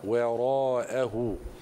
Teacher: الواو المرققه جاورت الراء المفخمه وان لم يعتني بها القارئ لخرجت الواو مفخمه هكذا وراءه وا انما نريد ان نقراها وراءه كذلك وهو الحق